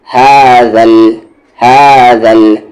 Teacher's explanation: اس ہا کا مخرج باٹم تھروٹ، سب سے نیچے والا حلق، یعنی جو سینے کے پاس ہے، اور ذال کا مخرج زبان کا کارنر اور آپ کے سامنے والی 2 دانت کا کارنر